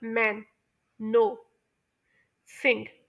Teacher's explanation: आपको जो माउथ है वो क्लोज हो जाता है टेंपरेरिली और नाक से आवाज निकल रही होती है